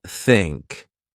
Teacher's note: Practice by putting your tongue between your teeth and blowing air, like think.